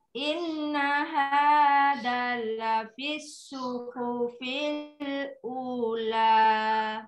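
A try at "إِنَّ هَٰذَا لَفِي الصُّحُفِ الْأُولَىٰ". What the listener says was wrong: Hadzanya panjang. Inna hadza. Kenapa hadza panjang? Soalnya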